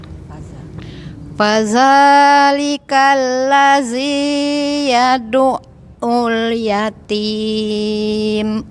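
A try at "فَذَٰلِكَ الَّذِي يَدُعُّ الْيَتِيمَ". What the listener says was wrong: Matnya Ibu panjangnya dipendekin sedikit ya. Fadzalikal ladzi, itu kepanjangan ya. Panjang dikit tuh. Di dua ketukan aja. Fadzalikal ladzi yad'ul yatim.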